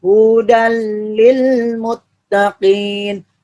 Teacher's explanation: idgam bilagunnah yaitu idgham yang melebur kalau ditambah bila artinya tanpa mendengung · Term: idgham bilagunnah